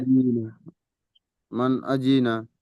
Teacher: নুন সাকিনের আওয়াজকে বিনা গুণনায় জাহির করে পড়তে হবে। একে ইজহার বলে।